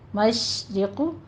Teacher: قل للہ میں لام جو ہے جلالہ، اسم جلالہ کو ہم باریک پڑھیں گے، للہ ہی نہیں پڑھنا، للہ، للہ المشرق، مشرق. یہاں پہ شین پہ تفشی کی آواز لے کر آنی ہے، حمز بھی ہوگا اس میں.